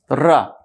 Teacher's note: ये लुंठित या प्रकंपित वर्ण होता है र, र बोलने में कंपन हो जाता है। रा बोलिए तो जीभ आपकी थर्रा उठती है, कांप उठती है